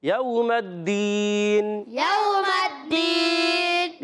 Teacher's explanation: واو ساکن سے پہلے زبر واو لین ہوگا, نرمی سے ادا کرنا ہے, میم کو دال سے ملانا ہے, دال یا زیر دی.